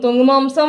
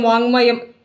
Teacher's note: മ എന്ന് ങ്ങ ആവും എന്ന് പഠിച്ചാൽ തീരാവുന്ന പ്രശ്നമേ ഉള്ളൂ അപ്പൊ എന്താണ് ക് പ്ലസ് മ ചേർത്തെഴുതൽ ങ് ആകും ക് മാറും ങ്ങ ആവും